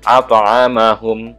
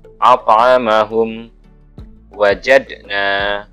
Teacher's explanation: Adalah qalqalah yang pantulannya terlihat tidak begitu jelas karena berada di tengah kata dan segera disambung dengan bacaan sesudahnya. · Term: qalqalah kecil